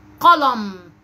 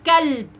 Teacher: الفرق بين القاف والكاف في النطق ان صوت القاف مفخم وصوت الكاف مرقق